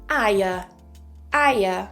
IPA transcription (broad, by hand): aɪə